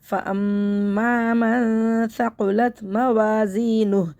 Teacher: فَأَمَّا مَن ثَقُلَتْ مَوَازِینُهُ وقف کی صورت میں ہے، الٹا پیش حذف ہو جائے گا اور ہا ساکن ہو جائے گا، تو نون ہا پیش نوح ایسی طرح آواز آئے گی۔